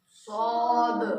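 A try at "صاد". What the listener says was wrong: स्वा स्वा स्वा, डब्ल्यू की आवाज नहीं आना।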